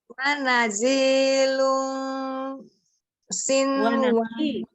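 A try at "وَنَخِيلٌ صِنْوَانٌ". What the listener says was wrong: Bukan naji tapi nakhilun. Kha itu.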